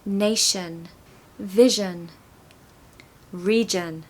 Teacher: I O N endings tend to be a schwa